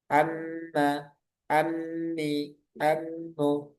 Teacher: Keluarnya dari hidung dan kedua bibir. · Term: huruf mim